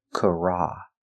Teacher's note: We have the R, ra, kara. This is the open ah sound, the short ah, like stop and hot, kara. The T is pronounced with a D, so we say karate, making the long E sound like green beans.